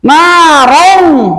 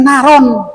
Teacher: ke depan ada huruf za termasuk ihfa, maka membacanya harus eng. Narong, jangan naron.